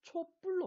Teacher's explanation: 앞에 모음 초가 왔죠? 뒤에 브가 왔어요. 그래서 브가 뭐가 됐죠? 뿌가 됐어요. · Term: 사이소리